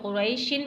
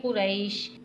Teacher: اب یہاں پہ وقف آ گیا ہے، وقف میں آپ کو پتہ ہے دو زیر کی تنوین ہے، دو زیر کی تنوین ساکن ہو جاتی ہے، یعنی ہم یہاں پر رک جائیں گے